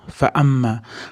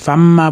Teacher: Famma bo'lib ketmasin. Fa'amma, a ni aniq aytamiz. Mim ni g'unnasini ushlab turamiz.